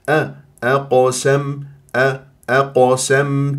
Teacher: القاف مفخمه مرتبه رابعه ومقلقل